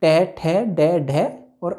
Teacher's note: इन वर्णों को जब हम उच्चारित करते हैं तो हमारी जीभ जो है मूर्धा अर्थात मसूड़ों को टच करती है और इन्हें हम मूर्धन्य वर्ण भी कहते हैं।